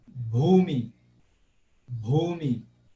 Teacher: é só perceber que você tem que fazer aquela aspiraçãozinha